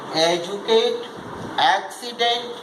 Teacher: Accent on, in the words with 3 syllable, accent also shifts. Accent on the first syllable